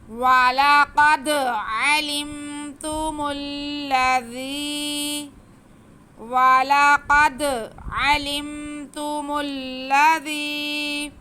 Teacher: آواز کو ایک الف کے برابر کھینچ کے پڑھیں گے اور ذال کو نرمی سے پڑھیں گے، سیٹی کی آواز بالکل نہیں آئے گی